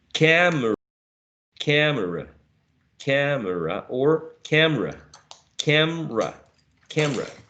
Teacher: we can again get rid of the uh schwa in the middle so we may reduce the number of syllables we may compress